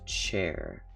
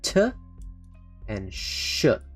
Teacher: the CH sound is actually two sounds the T and the sh so let me go back to chair T and [Music] sh